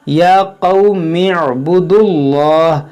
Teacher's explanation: देखिए जब पीछे से मिलाकर पढ़ेंगे तो इस अलिफ को नहीं पढ़ेंगे, इसे कहते हैं हमज़ा वसली। ये हमज़ा वसली मिलाकर पढ़ने की सूरत में गिर जाएगा। इसको इस मीम से मिलाएंगे, या क़ौम इअ्बुदुल्लाह।